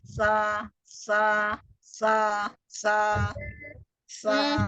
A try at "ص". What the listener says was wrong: Bukan sa, tapi the.